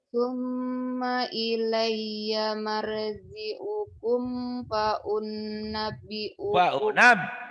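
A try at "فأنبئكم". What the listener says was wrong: faunabbiukum, jangan ditahan, faunabbiukum faunab faunab ah.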